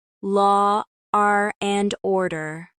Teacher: an extra R sound appears between words to make them flow more smoothly, even if there's no R in spelling. For example, law and order often sounds like law, R, and order.